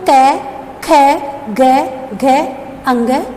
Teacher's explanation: इन वर्णों का उच्चारण हम कंठ से करते हैं। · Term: कंठ्य